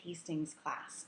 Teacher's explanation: the ending S sound. It's a harder S, almost a Z sound.